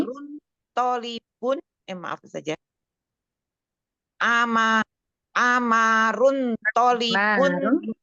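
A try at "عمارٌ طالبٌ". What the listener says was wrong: Mimnya bertasydid.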